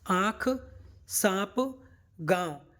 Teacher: बिंदी है ये क्या है अनुनासिक है ठीक है ना और इन सभी को बोलने में हमारी नाक से ध्वनि उत्पन्न हो रही है